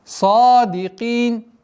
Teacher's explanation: Твердое произношение сад и с долготой в размере двух огласовок. · При остановке аннулируется фатха, уходит в сукун, и долгота в размере двух огласовок кясры.